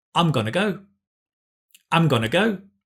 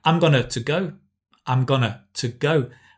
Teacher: remember the gonna includes the two so you don't need to say two go you drop the two